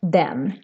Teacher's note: here the E is very short, even if it's just one consonant coming after